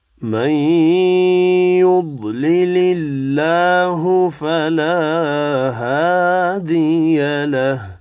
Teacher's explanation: من ادغام مع الغنة هوگا · يضلل الله بہت پور پڑھیں گے. اللہ کا نام والا لام پچھلی لام والی زیر کی وجہ سے باریک ادا کرنا ہے. فلا هادي له دو الف مدہ ہیں, ایک ایک الف کی مقدار میں کھینچ کر پڑھنے ہیں.